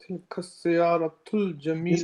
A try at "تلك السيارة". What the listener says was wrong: You're saying siyar, you're rushing the sin and the ya and the alif, it's all rushed. Tilka sayyaratu. You're saying siyar, you got to give the ya, it's haq, it's right. Tilka as-sayyaratu.